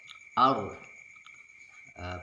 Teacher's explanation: Ujung lidah menempel pada langit-langit depan atas. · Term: huruf Ra